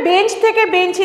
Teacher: আর আসতে পারে কোথায় একদম শেষে অর্থাৎ সেক্ষেত্রে কি হচ্ছে যে শব্দের শেষে একটা স্বরধ্বনি আগমন ঘটছে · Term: অন্তঃসরাগম